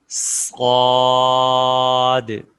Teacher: صاد میں بھی وسل ساؤنڈ ہے اور صا کو موٹی آواز میں ادا کریں گے